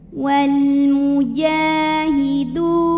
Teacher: Du matobi'i zahiri sebab ada waw sukun yang sebelumnya baris dhammah, maka huruf dal kita panjangkan 2 harokat juga ya